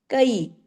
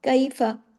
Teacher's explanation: کیفا یہ یائے لین ہے، اس کو اردو کی طرح کیفا نہیں پڑھنا